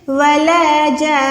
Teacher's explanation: شد بھی ہے، ساکن بھی ہے، تو آپ نے نون کو تھوڑا لمبا کر کے ادا کرنا ہے۔ جان، اتنا نون کو نہیں پڑھنا بلکہ نون کو تھوڑا لمبا کریں، کیسے؟ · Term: نون شد